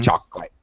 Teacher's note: chocolate has a dropped syllable all right there's that middle o that we actually don't pronounce in English